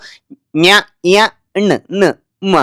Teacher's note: ಅನುನಾಸಿಕ ಅಂದ್ರೆ ಮೂಗಿಂದ ಉಚ್ಚರಿಸ್ತಕ್ಕಂಥ ಇದು ಇದಾಗಿರ್ತವೆ ಅಕ್ಷರಗಳು. ನ್ಯ ಯ ಣ ನ ಮ ಅಂತಕ್ಕಂಥದ್ದು.